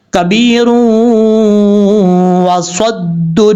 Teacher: یہاں پہ ہم اس کو کنیکٹ کریں گے را کو واؤ کے ساتھ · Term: ادغام